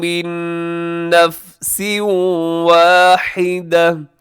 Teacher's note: نون ساکن کے بعد نون، یہاں پہ ہوگا ادغام غنے کے ساتھ · یہاں میم ساکن کے بعد میم آ رہا ہے تو یہاں پہ ادغام ہوگا، ادغام میں شفوی